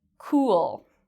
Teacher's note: In this case, my lips make a circle, cool, and it's a longer sound.